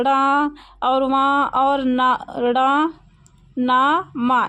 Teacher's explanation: इन सबको बोलने में क्या होता है, नाक का प्रयोग, नासिका का प्रयोग होता है, इसलिए इनको नासिक व्यंजन कहते हैं।